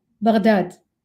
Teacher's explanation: pronounced with a ghain, stumbling from the back of the tongue and the top of the throat, like a gentle gurgle of water flowing from the Tigris in silt-heavy swirls that find themselves lost on the edges of banks.